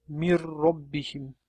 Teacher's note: Bu yerda g'unnasiz idg'om qilinadi hamda na tovshi tushirib qoldiriladi. Mana hozir pastda siz man hamda roalarini bog'lanishini ko'rib turibsiz. · min hamda risqin kalimalari qo'shilganda mir risqin deb o'qiladi. Mana pastda yana min hamda robbihim kalimalari qo'shlilganda mir robbihim deb o'qiladi.